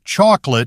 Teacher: the syllables come out with almost equal length and force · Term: syllable time language